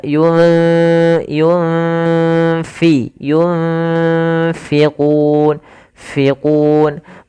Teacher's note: ini usahakan disamarkan nunnya kepada huruf fa. Makhraj fa ada bibir maaf gigi atas menempel dengan bawah ya. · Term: ikhfa